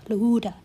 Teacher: I make this sound by adding a tiny puff of air after l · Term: L plus H